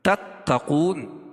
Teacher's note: تا باریک پڑی جاتی ہے اور قاف کو پور پڑھتے ہیں، کیوں؟ قاف حروف مستعلیہ میں سے ہے، اور وقف کی صورت میں یہاں مد عارض وقفی ہوگا، اس میں طول، توسط، قصر تینوں جائز ہے، ٹھیک ہے۔